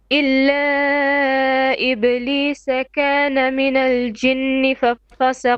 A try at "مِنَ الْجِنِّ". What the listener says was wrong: 2 beats minimum of غنة, deep غنة. You're stretching the noon now. You said ni.